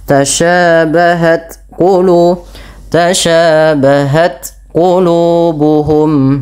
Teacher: Maka ketika melafalkan ta tidak dibaca tasyabahat, tapi dia tasyabahat qulubuhum ya, matikan dulu ta-nya dengan syiddahnya baru dengan hamsnya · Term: sifat hams